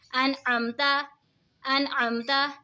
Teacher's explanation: نون ساکن کے بعد حروف ہلکی کا عین آ رہا ہے تو اظہار ہوگا